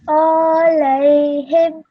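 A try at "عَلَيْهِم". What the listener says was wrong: Just make the ayn a little bit shorter. Alayhim.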